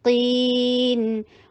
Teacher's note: قاف کو ہیوی کیجئے اور مد عارض للسکون کو اپلائی کیجئے 4 حرکہ لانگ کر کے